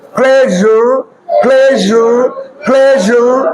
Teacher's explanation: পির উচ্চারণ হবে ফ, আর এস এর উচ্চারণ হবে জরানো, জরানো জ